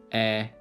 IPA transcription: ɛ